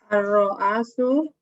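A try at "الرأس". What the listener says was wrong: Yakin hamzahnya fathah? Ar-ra'su.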